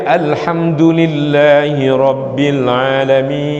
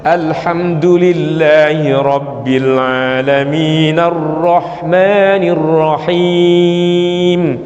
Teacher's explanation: Mimnya harus panjang. Panjangnya seberapa? Melebihi 2 harokat boleh. Dari 2 sampai 6 harokat menurut para ulama. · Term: Mad arid lis sukun